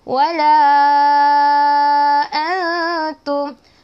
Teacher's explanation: Wala kita panjang, ada tanda ombak, ada tanda mat, bertemu hamzah, panjang 4 atau 5 harokat.